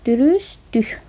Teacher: Dürüstlük sözünün tələffüsündə t düşür. Daha sonra dürüst dük formasında tələffüz olunacaq.